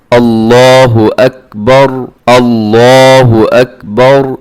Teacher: आपने अल्लाह ऐसे मोटा करके अपने इस लफ्ज़ को अदा करना है